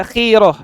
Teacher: Khi-nya tipis saja, khiroh.